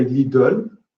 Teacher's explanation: So the epenthetic vowel of French is round, clearly round.